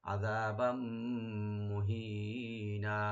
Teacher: তানবিনের উপরে যে মিম আসছে এখানে ইদগাম উইথ গুন্না হবে